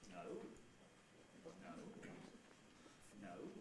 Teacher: one rice fall on a single syllable is okay fairly simple you start mid pitch or maybe even quite low pitch and then rise to quite high and fall again within the same syllable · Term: Rise fall